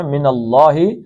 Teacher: اللہ کا لام موٹا پڑھنا ہے